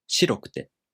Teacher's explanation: In the traditional way, the accent falls on し: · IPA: [shiꜜrokute]